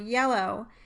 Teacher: The voiced palatal glide, the first sound in the word yellow, is articulated very similarly to the vowel E, with a tongue constriction near the hard palate, except that the tongue constriction is slightly higher and you can't sustain the y sound.